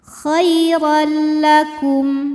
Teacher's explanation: Kemudian ada hukum idgham bila gunnah, karena ada tanwin fathah menghadapi huruf lam. Maka cara bacanya tanwinnya ini dileburkan atau dimasukkan ke lam, khairal, tanpa disertai dengungan. Jadi cukup kita tekan saja.